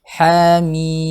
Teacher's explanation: ha panjang, ha 2 harakat, mim dibaca 6 harakat